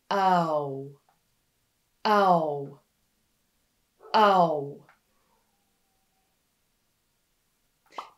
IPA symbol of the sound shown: aʊ